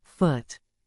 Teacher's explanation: sound is short and relaxed repeat cup finally as in foot this sound is short and made with rounded lips but it's not as long as a regular ooh sound repeat foot short vowels are typically brief and mastering them will · This sound is short and made with rounded lips, but it's not as long as a regular oo sound.